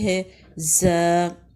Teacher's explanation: زا کی ادائیگی ہے زا، زا کے ساتھ الف لگاتے ہیں اور اس کی ساؤنڈ ہے زا۔ باریک حرف ہے، ادا کرتے ہوئے زبان کا پچھلا حصہ نیچے رکھتے ہیں اور منہ کی شیپ پھیل جاتی ہے، جسٹ لائک انگلش لیٹر زی۔